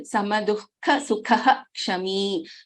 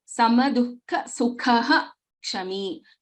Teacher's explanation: when a visarga is succeeded by ksha, then the complete visarga is pronounced